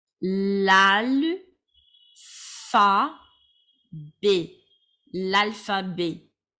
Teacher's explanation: your T is going to be silent